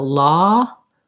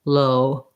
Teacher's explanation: versus ah there's no change into how open my jaw is the ah is slightly more open than the o and the o is more rounded um more tight lipped